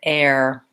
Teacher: When I say the word air, I'm holding that vowel, I think, a little bit longer.